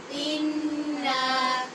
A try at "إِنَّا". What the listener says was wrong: یہاں پہ غنہ تو کرنا ہی ہے لیکن الف ہونے کی وجہ سے نون کو لمبا بھی کرنا ہے، انا نہیں کہنا، ٹھیک ہے؟